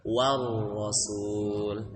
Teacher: baca ra itu jangan diperjelas, jangan warasul, tapi dibikin samar.